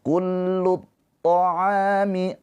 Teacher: A dibaca panjang 2 harokat karena ada alif sebelumnya harokatnya fathah. Ini adalah mad tabi'i.